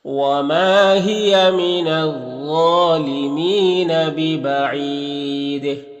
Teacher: یہاں پر یا مدہ ہے، 1 الف کے برابر کھینچیں گے۔ ببعید، یہاں پر وقفے کی صورت میں مد عارض وقفی ہوگا اور دال میں قلقلہ ہوگا